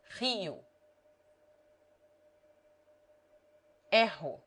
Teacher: R has two sounds. When it begins a word or is double, it is rolled, as in French or Spanish.